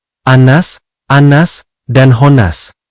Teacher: Wajib dibaca mendengung dan ditahan selama dua ketukan atau dua harakat atau satu alif. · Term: gunah